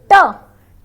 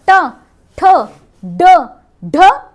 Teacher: लगेगी तालू पर लेकिन जीभ टर्न करेगी पीछे की तरफ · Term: मूर्धन्य